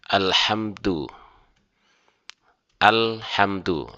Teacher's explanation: lamnya dibaca kemudian masuk ke huruf berikutnya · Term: alif lam qamariyah